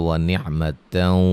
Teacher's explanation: سکتے ہیں۔ یہاں اگر ہم ملا کے پڑھتے ہیں تو وَنِعْمَتًا، نون تنوین کا ادغام مع الغنہ ہوگا